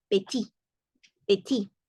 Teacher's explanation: Y no se pronuncia la T, por lo tanto no decimos petit, sino petit, petit.